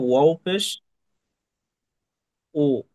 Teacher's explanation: মুখ, ঠোঁট গোল করে, ঠোঁট গোল করে কাছাকাছি লাগবে, ঠোঁট কারণ গোল।